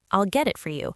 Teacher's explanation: The words blend together. The T sounds like a quick D, and everything flows as one unit. This is called connected speech, and it's what makes English sound natural versus choppy and robotic.